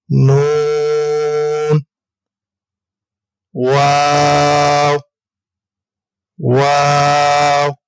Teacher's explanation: دونوں ہونٹوں کی گلائی سے ہم واو کو ادا کریں گے